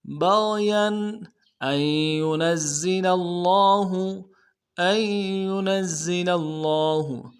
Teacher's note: نون کو زا کے ساتھ ملانا ہے، زا کی سیٹی نکلے گی، سیٹی نکالیں گے